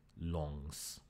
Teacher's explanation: The S means that because it's a voiceless sound, your vocal cords shut down and slow down, and this brings the pitch down. But as the S was lost, people thought, oh, there should still be some sort of falling pitch in there, and created a falling tone, as in the modern Chinese yong. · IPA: *loŋs